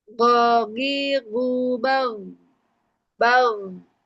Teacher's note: Jadi nggak bag, tapi apa bunyinya goinnya dipanjangkan bunyi goinnya bal. Jadi posisi huruf goin itu ada di pangkal tenggorokan atas